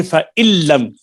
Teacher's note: نون کا لام میں ادغام ہوا ہے، ادغام تام